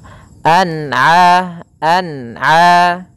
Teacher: Ana harus dibaca dengan jelas tidak boleh dibaca dengan bacaan dengung